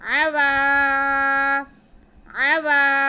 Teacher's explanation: عین پہ زبر, واو پہ زبر اور ساتھ میں الف, یہ الف مدہ ہو گیا. واو کی آواز کو ہم کھینچیں گے.